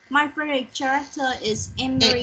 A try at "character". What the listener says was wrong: You just say character. You don't have to pronounce the H there. It's just character.